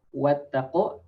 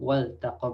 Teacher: we don't read wattaqu but waltaqu, because the lam is part of the fi'l, part of the word itself. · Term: lam fi'l